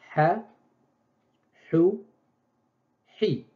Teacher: C'est comme si c'est une vanne sèche qu'on ouvre à peine et qui fait libérer de l'air.